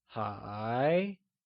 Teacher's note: is pronounced using a mid rising tone or the second tone